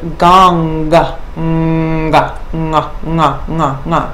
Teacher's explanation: different if there's a dot beneath that's a different nasal so this is very specifically the nasal at the guttural position of the mouth · take the back of the tongue and push the sound up and resonate the vibration across the palate, from the soft palate all the way across the top of the mouth and up into the head. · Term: guttural nasal sound